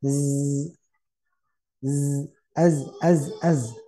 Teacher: bunyi lebahnya yang terdengar Z bukan hembusannya · Za itu tidak hembus saudaranya yang hembus itu sa